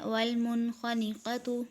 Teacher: والمنخنقۃ میں نون ساکن کے بعد خا ہے، اس میں بھی اظہار ہو رہا ہے